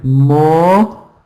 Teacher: So in the second syllable is the schwa sound.